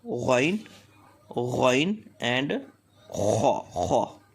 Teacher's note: Ghaen and Kha comes out from the top part of throat.